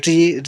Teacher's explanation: ऋ ऋ बोलेंगे तो जीभ आपकी मुड़ जाएगी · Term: मुर्धन्य व्यंजन